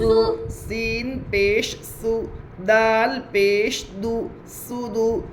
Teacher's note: پیش کو جلدی پڑھے تھوڑا بھی نہ کھینچے، معروف پڑھے مجہول آواز سے بچے